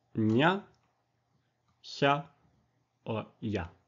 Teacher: The palatal sounds are produced with the tongue body also against the hard palate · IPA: /ɲ/ /ç/ or /j/